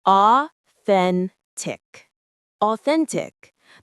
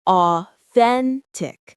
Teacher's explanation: The stress is on the middle syllable. Authentic. The th sound is the same as in think.